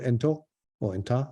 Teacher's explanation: the t is not pronounced anymore